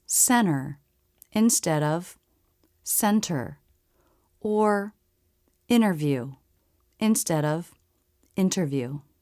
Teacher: we often drop the T when it comes after an N.